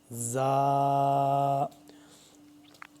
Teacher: زا کو ہم نے سختی سے پڑھنا ہے، زا، دونوں دانتوں کو جوڑ کے